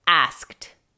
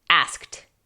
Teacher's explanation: la ed suena casi como una T ligerita en inglés